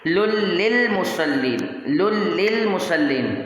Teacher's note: یہاں پر لام کو لام سے ملا دینا ہے